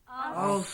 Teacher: Memang angin terlepas kerana bersifat dengan sifat hamas.